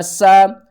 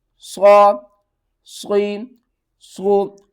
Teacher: سین کو ہم نے سیٹی کے ساتھ پڑھنا ہے، صاد کو ہم نے موٹا کر کے پڑھنا ہے. صاد لاسٹ میں دال کی آواز ہے.